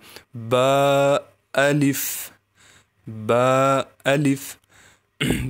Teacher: با کو نکالتے ہوئے سامنے کے دونوں ہونٹ ملا لیں گے